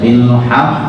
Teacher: Bilhaq tidak perlu dinaikkan tapi cukup hanya ditekan dan suara datar.